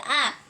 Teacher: vokal Netral yaitu diucapkan dengan bentuk bibir dalam posisi Netral